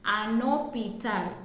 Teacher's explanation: So you hear the last N in un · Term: liaison